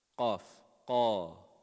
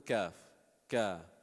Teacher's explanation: Qaf and kaf, very close makhraj, but also one is heavy, one is light.